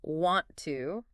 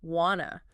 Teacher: instead of saying want to as two separate words, we link them to sound like wanna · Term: linking